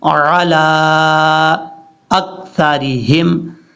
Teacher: یہاں پر عین کو حمزہ کی آواز نہیں پڑھنی